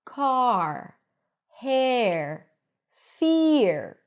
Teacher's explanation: Now, this R is pronounced only in American English. In British English, you actually don't hear the R here. · a group of words where the R appears after the vowel. Then you first hear a vowel sound and then the R.